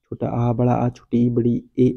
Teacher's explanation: आवृतमुखी जिन स्वरों के उच्चारण में ओंठ वृत्तमुखी या गोलाकार नहीं होता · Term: आवृतमुखी स्वर